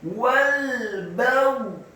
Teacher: Wal baghdha'u, kata baghdha'u, baknya dibaca tipis fathah 1 harokat, ghainnya dibaca sukun, tafkhim dengan posisi bibir bawah agak tertutup, dan huruf ghain yang sukun tidak boleh diqalqalahkan atau dipantulkan.